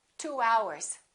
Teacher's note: Let's put a little W in there and we say 2 hours.